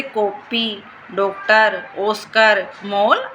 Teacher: ये चंद्रबिंदु होता है और यह खाली चंद्र की तरह होता है। वह स्वर जिसका उच्चारण आ तथा ओ के बीच की ध्वनि ओ के रूप में होता है। इसका प्रयोग अंग्रेजी से हिंदी में आए शब्दों के में किया जाता है। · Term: आगत स्वर, आगत